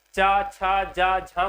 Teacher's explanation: चा छा जा झा को क्या कहा जाता है, स्पर्श संघर्षी व्यंजन कहा जाता है।